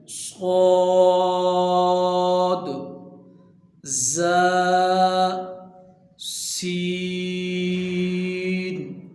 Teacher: ان کا بھی ایک ہی مخرج ہے، زبان کی نوک اور دونوں دانتوں کے اندرونی کنارے سے ادا ہوتے ہیں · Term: حروف صفیریہ